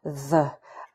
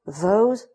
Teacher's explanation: In the first case, the sound th, a voiceless dental fricative, and the, a voiced dental fricative